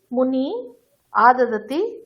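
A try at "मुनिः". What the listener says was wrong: মুনিহি বিসর্গটা উচ্চারণ করো।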